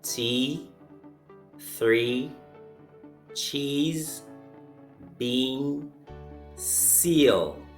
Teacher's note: e is a long sound move your tongue up a little as you say it